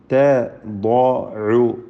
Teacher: തദഉ, ദ്വാദിന് മാത്രമാണ് തഫ്ഖീം, മറ്റക്ഷരങ്ങൾക്ക് തഫ്ഖീം വരികയില്ല.